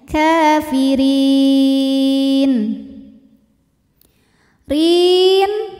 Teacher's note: ro dibunyikan secara tarqik karena berharakat kasrah maka dibacanya tipis